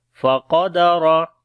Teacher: مَبْتَلَاهُ فَقَدَرَ کسی حرف کو لمبا نہیں کریں گے، قاف اور را کو موٹا پڑھیں گے